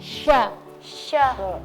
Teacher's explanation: angin yang keluar itu bukan lurus tapi melebar karena ada sifat TVC itu menyebar anginnya menyebar Nah karena makhraj